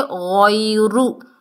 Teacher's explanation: یا ساکن سے پہلے زبر ہے، یا لین ہے، نرمی سے ادا کریں گے